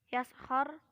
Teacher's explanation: Yaskhar roknya dibaca tafhim sebab rok sukun didahului fathah